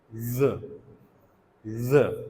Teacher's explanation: जब हम ज कहते हैं तो उस वक्त वोकल फोल्ड जो हैं वो वाइब्रेट कर रहे होते हैं